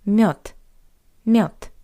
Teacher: By the way, have you noticed that the voiced consonant D at the end of this word also sounds like the paired voiceless consonant T